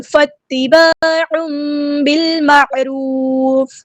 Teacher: تنوین کی آواز کو ہم میم کے ساتھ بدل دیں گے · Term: اقلاب